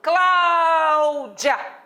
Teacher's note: O clá é a sílaba mais forte. Essa é a sílaba tônica. As outras são átonas, fraquinhas.